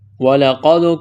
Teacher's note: قاف کو موٹا کرنا ہے، دال پر قلقلہ کریں گے